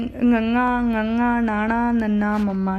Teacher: ਜਿਹੜੀ ਧੁਨੀਆਂ ਮੂੰਹ ਪੋਲ ਅਤੇ ਨੱਕ ਪੋਲ ਦੋਨਾਂ ਦੇ ਰਸਤਿਆਂ ਤੋਂ ਹਵਾ ਨਿਕਲ ਕੇ ਪੈਦਾ ਹੁੰਦੀਆਂ ਹੈ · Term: ਨਾਸਕੀ ਵਿਅੰਜਨ